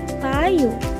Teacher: Ang paraan ng artikulasyon ng letrang P ay pasara o stop at ang punto ng artikulasyon ay panlabi o bilabial at wala itong tunog.